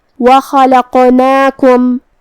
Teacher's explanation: قاف کی ادائیگی زبان کی جڑ اور تالو کے نرم حصے سے ہے. قاف بھی حروف التفخیم میں سے ہے, تو ہمیں اسے بھاری آواز میں پڑھنا ہے, اور جو کہ اس پہ جزم ہے تو یہاں قاف کا حکم ہوا قلقلہ, ہمیں اسے ہلاتے ہوئے یہ کلمہ کو ادا کرنا ہے.